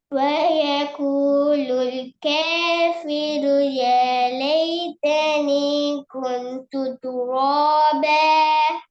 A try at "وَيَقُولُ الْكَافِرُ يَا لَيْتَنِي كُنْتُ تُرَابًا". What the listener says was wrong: இப்ப இதுல இருக்கிற பிரச்சனை தெரியுமா? லாம்ல இல்லன்ற சவுண்ட் முழுமையா வர மாட்டேங்குது. அடுத்த பிரச்சனை சரிண்ணே, இந்த இல்லன்ற சவுண்ட் முழுமையா வரணும் சொல்லி அளவு பேலதான்.